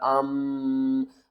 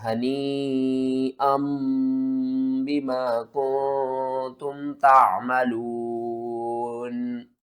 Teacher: جو حمزہ دو زبر ان کے بعد نون کی آواز آ رہی ہے نا اس کو آپ نے میم کی آواز میں بدل کر پڑھنا ہے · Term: اقلاب